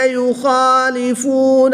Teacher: خا حروف مستعلیہ میں سے ہے تو اس کو پر پڑھیں گے